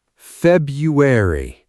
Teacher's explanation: The first R is almost invisible in natural speech. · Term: silent R